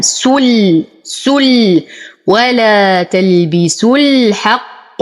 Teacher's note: المد واللام القمريه تلاقيا لفظا لا رسما اذا يسقط حرف المد فانتقل من ضمه السين الى اسكان اللام